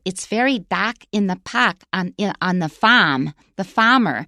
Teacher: for a lot of R's that come after vowels, most Taiwanese don't pronounce them